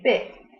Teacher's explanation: The tongue is high in the mouth and the lips are spread. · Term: front vowel